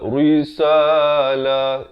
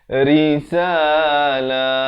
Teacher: Ra berbaris bawah jadi nipis. Jangan baca tebal.